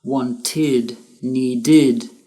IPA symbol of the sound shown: id